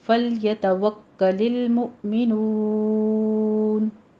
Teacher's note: मुमिनून में नू पे आपने जब साउंड लेकर आनी है तो ऐसी जैसे बू या तू, नू नाक में आवाज़ नहीं जानी चाहिए, स्ट्रेट रखना है अपनी आवाज़ को। नून मदारिस वक्फ़ी हो जाएगी, 6 काउंट करना है।